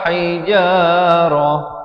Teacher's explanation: Saya waqaf di sini, ta marbutah ditukarkan kepada bunyi ha.